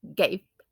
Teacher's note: V is assimilated by B in end position